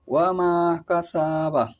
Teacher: এই তিনটি বর্ণ দুই ঠোঁটের মিলনে উচ্চারিত হয় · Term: বা মিম ওয়াও